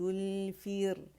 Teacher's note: را یہاں پہ باریک ہے کیونکہ را سیکنڈ سے پہلے ہمارے پاس کسرہ آ رہی ہے. الفر فی فیر, ٹھیک ہے, را موٹی نہیں پڑیں گے, ٹھیک ہے.